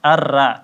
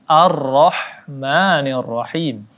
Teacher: Arok dibaca tebal Bukan dibaca tipis